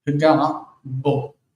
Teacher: Notice that the ayin is a consonant, so even though it's closely associated with the next, the bet, the beged kefet letter, it will never be pagavo because it's not a vowel. It sounds like a vowel to us, paga, but it's an ayin that closes the throat.